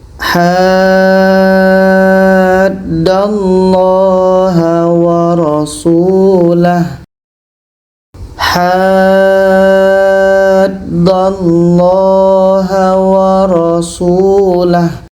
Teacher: Ha ini kita panjangkan 6 harokat baru masuk ke huruf yang ada tasydid. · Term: mad lazim kilmi mutsaqqal